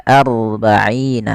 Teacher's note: Ro yang kita baca dengan bacaan tebal. Tidak dibaca arba'ina tapi ar. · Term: ro tafkhim